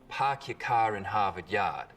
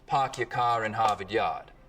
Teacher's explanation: Boston accents, of course, are non-rhotic, meaning no R sounds in park your car in Harvard Yard.